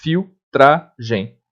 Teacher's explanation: Nesse caso de filtragem, o L tem som de U.